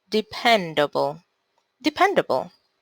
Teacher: De, pen, do, bull. The stressed syllable in dependable is on the pen syllable.